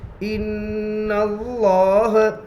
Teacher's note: لفظ اللہ کے لام سے پہلے زبر ہے، اس لیے لفظ اللہ کے لام کو پور پڑھیں گے. لام کے اوپر تشدید ہے، تشدید والے حرف کو 2 مرتبہ پڑھتے ہیں، ایک بار پہلے حرف سے ملا کر اور ایک بار خود سے.